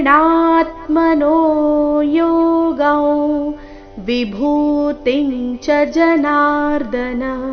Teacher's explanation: ಇಲ್ಲಿ ಅನುಸ್ವಾರದ ಉಚ್ಚಾರಣೆ ನಾಸಿಕವ ರೀತಿ ಕಾರಣ ಮುಂದಿನ ಶಬ್ದ ವಿಭೂತಿ ಅವರ್ಗೀಯ ವ್ಯಂಜನ ವ ದೊಂದಿಗೆ ಪ್ರಾರಂಭವಾಗ್ತಾ ಇದೆ